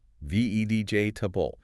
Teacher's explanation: in natural everyday speech, the middle E syllable almost disappears entirely, or is greatly reduced. It's pronounced V-E-J-table. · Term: syllable reduction